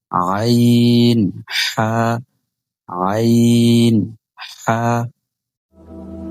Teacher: ২ number মাখরাজ হলকের মধ্যখান হইতে আইন হা, অর্থাৎ এই দুইটা হরফ হলকের মধ্যবর্তী স্থান থেকে উচ্চারিত হবে